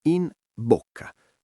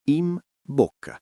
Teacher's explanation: La N di in davanti alla B di bocca non si pronuncia come una N normale, diventa quasi una M, in bocca, perché la M e la B si formano entrambe con le labbra e il cervello fa naturalmente quella piccola modifica per risparmiare energie articolatorie. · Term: assimilazione